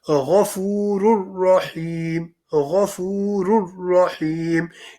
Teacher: you will not say the noon sakin or tanween, and instead say the letter afterwards. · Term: idgham without gunna